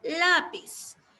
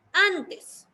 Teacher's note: la mayor fuerza de voz está en la penúltima sílaba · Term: palabra grave